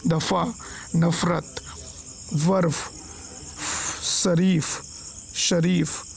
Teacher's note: फ जो है दंत और ओष्ठ ध्वनि है। इसके उच्चारण में ओठ दांत को पूरी तरह स्पर्श नहीं करते, बल्कि कुछ इस तरह से हल्का सा स्पर्श करते हैं ताकि हवा घर्षण खाते हुए बाहर निकले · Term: दंत ओष्ठ ध्वनि